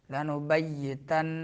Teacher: نون میں غنہ کرنا ہے، غنہ زمانی، لنبیتنہ اگر رکنا ہے۔